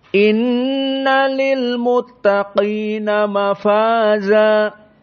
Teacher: Dan mafaza dalam keadaan muraqqaqah. Maka kita baca ayat ini dalam keadaan tafkhim pada qaf.